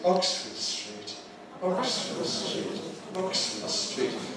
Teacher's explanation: Again, that's a compound noun following the regular rule where Oxford is the strong element, street is the weak element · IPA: [ˈɒksfəd striːt]